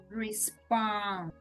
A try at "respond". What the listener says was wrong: Beautiful, and beautiful D at the end. Made it long.